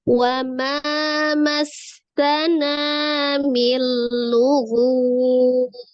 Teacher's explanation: Kemudian bertemu dengan satu huruf mad, bertemu dengan satu huruf yang disukunkan karena waqaf, menjadi mad arid li sukun panjangnya 2, 4 atau 6. Nah, karena yang disukunkan di akhir ini adalah huruf ba, salah satu huruf qalqalah, maka dibacanya dipantulkan. Ya, qalqalahnya qalqalah kubro.